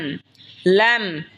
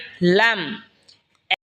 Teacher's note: লাম জিহ্বার আগার কিনারা সামনের ওপরের মারির দাঁতের সঙ্গে লাগা উচ্চারণ হবে লাম।